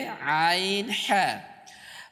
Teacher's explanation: দুই নাম্বার মাখাজ হচ্ছে হলকের মধ্যখান হইতে আইন হা